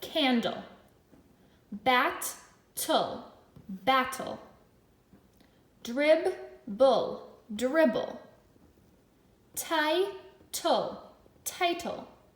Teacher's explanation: Now I'm noticing that LE at the end, it sounds like ol.